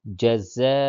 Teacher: زبر زیر پیش کو حرکات کہتے ہیں، زبر زیر پیش کو جلدی پڑھتے ہیں. اور اس پہ اوپر الف پہ مد ہے، اسے کھینچ کر کے پڑھیں گے